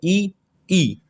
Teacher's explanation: आप ई बोलिए, ई तो देखेंगे आपका जो तालु स्थान है उससे उच्चारित हो रहा है ई